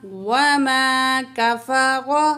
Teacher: را کو پر پڑھیں گے، را کو پر زبر ہے، کاف باریک پڑھیں گے